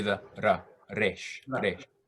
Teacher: It's basically equivalent to the R sound, but it is trilled in Hebrew. So it has that ra, ra, ra instead of ra, ra, ra. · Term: trilled R